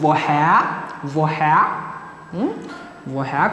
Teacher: the R at the end of the syllable, we do not pronounce it. So it just, we elongate the vowel.